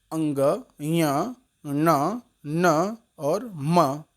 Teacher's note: अपने अपने वर्गीय उच्चारण स्थान के साथ साथ ये जो अंतिम वर्ण है अंग, य, न, न और म, ये नासिका की सहायता से भी बोले जाते हैं। अतः इन वर्णों को अनुनासिक भी कहते हैं।